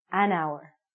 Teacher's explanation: the H word it sounds like we're saying our so because this word our sounds like a vowel because the H is silent